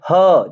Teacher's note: कंठ से ही आवाज निकलती है और उष्म व्यंजन भी है